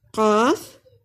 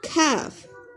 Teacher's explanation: زبان حلق میں قوے کے ساتھ لگ کر جب علیحدہ ہوگی تو قاف، اور زبان جب قوے کے پیچھے کی طرف تھوڑی سی اوپر کی طرف اٹھے گی تو کاف ادا ہوتے ہیں